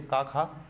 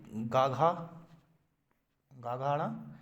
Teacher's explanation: गा घा मतलब सघोष मतलब ज़्यादा, मतलब गले में कंपन महसूस ज़्यादा हो। और अघोष का मतलब कि घोष मतलब घोष का मतलब जानते हैं आप, जैसे कि ज़्यादा वो ना हो, कि कंपन वगैरह ना हो गले में, तो उसको बोलते हैं का खा गा घा।